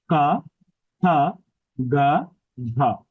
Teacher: ক এর উচ্চারণ স্থান কণ্ঠ খ এর উচ্চারণ স্থান কণ্ঠ